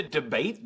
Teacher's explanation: the accent is in the second syllable corresponding to bait